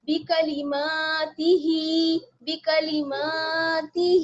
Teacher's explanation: ہا کھڑا زیر ہی بی کلماتی ہی. اس میں دیکھیے جہاں پر بھی زیر آ رہا ہے اس کو خوب باریک کر کے پڑھیں گے اور میم اور ہا کو کھینچ کر پڑھیں گے